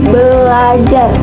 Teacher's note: Sebagai contohnya yaitu dalam kata belajar, yang dimana berdasarkan kata dasar yaitu ajar bertemu dengan prefiks atau awalan ber, maka ia menjadi belajar, bukan berajar. Nah, proses ini terjadi karena adanya suatu perubahan fonem yaitu fonem R berubah menjadi L